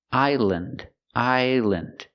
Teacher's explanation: This is not a compound word, so we do not pronounce it land. We use the short sound, island, island. And remember, the S is silent.